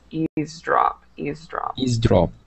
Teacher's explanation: sometimes people will pronounce the V but we don't usually pronounce that V